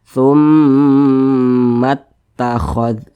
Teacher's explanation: Tidak dibaca panjang, tapi langsung dimasukkan ke huruf ta, ditasydidkan.